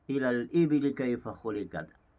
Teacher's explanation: wajah saktah, iaitu berhenti seketika dan kadar dua harakat dan menyambung bacaan dan nafas yang sama